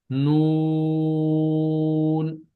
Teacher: نون یہاں ناک میں آواز چلے گی تھوڑی سی